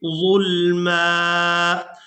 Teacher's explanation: یہاں پر آیت مکمل ہو رہی ہے، وقف کریں گے تو وقف کی صورت میں میم پر ایک زبر ادا کریں گے اور اس کو ایک الف مقدار کھینچ کر ادا کریں گے،